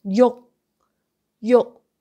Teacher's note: No K sound at the end.